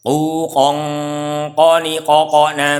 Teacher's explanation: ini ada ikhfa yang ketemu huruf qaf, ini sama dengan kaf, jadi harus masuk hidung semua dan ditebalkan karena huruf isti'la. Bukan kon tapi kong langsung tebal.